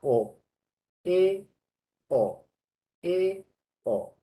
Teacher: Esas son vocales medias, porque la boca está medio a abrir